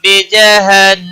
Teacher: بجہن نون مشدد پر گنہ ہوگا